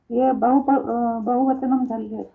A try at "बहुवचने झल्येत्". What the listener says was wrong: बहुवचने झल्लेत, हाँ वचनम नहीं, बहुवचने झल्लेत।